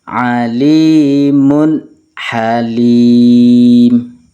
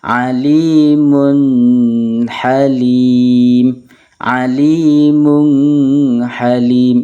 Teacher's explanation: Contoh yang kedua adalah huruf ha. Tanwin bertemu dengan ha, maka harus dibaca jelas. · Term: idhar halqi